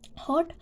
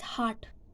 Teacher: There are more lips rounding and less jaw drop in British English.